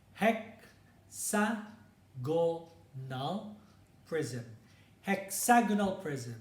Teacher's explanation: So the stress is on the first and second syllables